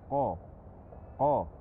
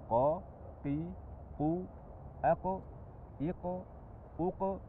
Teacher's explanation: mengucapkan huruf q tanpa membulatkan bibir jadi bukan qo tapi cukup dengan mengangkat pangkal lidah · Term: tafkhim